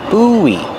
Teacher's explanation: When you link the vowels, you hear kind of a W sound.